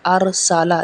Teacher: حمزہ زبر را ار، سین زبر سا، لام زبر لا، ارسالا۔ یہاں پہ سین سیٹی والا ہے